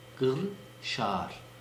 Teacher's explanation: Çünkü Kırşehir'in Osmanlıca'da yazılışı kefle değil, yani normal k ile değil, gafla yazılmakta. Gı diye okunur bizim orada Kırşehir.